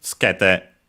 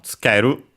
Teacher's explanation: the u of tsu is between two unvoiced consonants, so it's barely heard, if at all